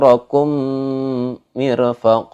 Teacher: mim mati harus ditahan sepanjang 2 harokat jadi bacanya itu ditahan masalah tapi agak sedikit ditahan panjangnya yakni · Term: Idgham Mutamatsilain